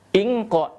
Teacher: Ingqa, tanwin bertemu dengan huruf qaf, maka dinamakan dengan ikhfa hakiki. Maka ketika melafalkannya bukan hanya dengung ya, melainkan dengan bacaan samar seperti menghadapi huruf qa ya.